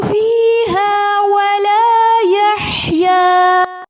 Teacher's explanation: حا کو وسط حلق سے ادا کریں گے، مد العوض کے ساتھ وقف کریں گے۔